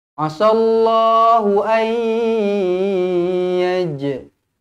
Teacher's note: Nun kosong bertemu dengan Ya idgham maal ghunnah dengung dua harakat